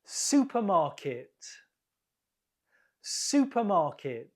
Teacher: the first syllable is stressed supermarket